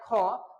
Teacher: क से थोड़ा ज्यादा समय लगता है और ऑक्सीजन भी यानी जो है वायु की भी आवश्यकता पड़ता है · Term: महाप्राण